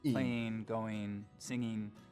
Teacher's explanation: ing endings pronounced as een